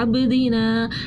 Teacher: با پہ قلقلہ کیا کیونکہ با ساکن ہو رہی تھی